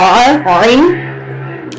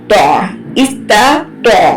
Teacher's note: تو عین middle throat سے